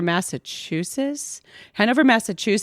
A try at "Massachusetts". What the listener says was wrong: Are you calling it Massachusetts? Massachusetts with a T at the end.